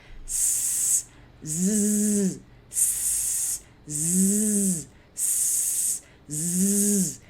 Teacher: Em vez de usar o lábio de baixo e o dente de cima para impedir a passagem de ar, a gente usa o dente de baixo e o dente de cima para impedir a passagem de ar.